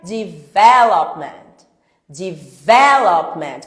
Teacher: você tem que entender que a sílaba tônica é a segunda. Sílaba tônica, sílaba forte é a segunda.